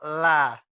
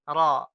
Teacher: Kalau la ini kita rasakan suaranya itu belok, la. Kalau ro ini kita kasih getaran, ro. Ya, kita kasih getaran.